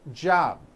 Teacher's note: you may be saying job without a b sound or the b is so weak